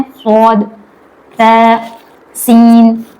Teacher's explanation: स्वाद को हम पूर पढ़ते हैं, सा को हम जबान की नोक को दांतों पे लगाकर पढ़ते हैं और सीन में सीटी आती है